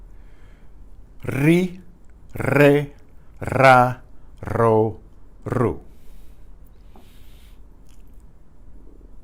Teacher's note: The initial R is also trilled, like the double R.